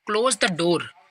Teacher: if you say close the door, your voice goes down on the door. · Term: falling tone